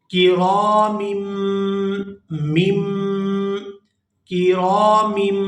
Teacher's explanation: یہ میم دوسری میم کے ساتھ مل کر ادا ہوگی